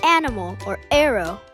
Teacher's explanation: the sound made when starting to say animal or arrow, like a little catch in your throat